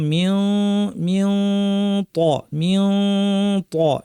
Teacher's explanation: তাহলে মিও ত বলার সময় কাছাকাছি নিয়ে জিহ্বা রেডি করে নাক থেকে গুন্না করব। ত যেহেতু ভারী, ভারী গুন্না করব, মিও মিও ত মিও ত এরকম আওয়াজ হবে।